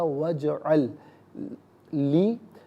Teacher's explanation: اجعل میں جو لام ساکن ہے اسے لی کی لام کے ساتھ ملائیں گے، لام کی آواز کو ہی ادا کریں گے